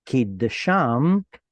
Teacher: you lose the tzere, it goes to shva because it's unstressed.